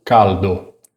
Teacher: O L italiano não tem o som de U.